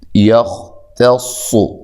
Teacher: خوا کو موٹا ادا کریں گے لیکن ہلانا نہیں ہے · تا کو باریک پڑھنا ہے، صاد کو موٹا ادا کرنا ہے